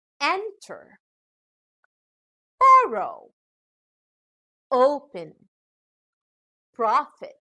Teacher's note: these are two syllable verbs where the final syllable contains a short vowel so the stress is given on the first syllable